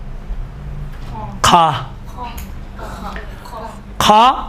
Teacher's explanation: کھا ابتداء حلق سے نکلتا ہے، اس کی حالت خراٹے والی حالت۔ مثلا کوئی آدمی سوتے وقت خراٹے مارتا ہے، یہ دیکھیں یہ خراٹے، یہ سے کھا ادا ہوتا ہے۔